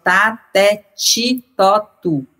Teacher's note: Quando tá na frente do i, o t vira tch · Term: palatalização